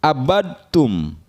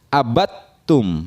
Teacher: Cara membacanya atau dibaca jadi abattum, ya. Dalnya hilang atau lebur ke huruf ta, ya. Dal sukun bertemu dengan huruf ta. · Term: idgham mutajanisain